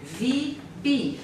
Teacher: for the Spanish, there's an interesting phenomenon there that the V oftentimes becomes the B